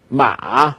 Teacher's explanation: you have this break in the middle, like if you had something in your throat when you're talking, you go, ma. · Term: third tone